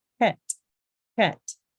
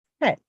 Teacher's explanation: The base sound is a KH sound, that glottal sound, like you're clearing your throat.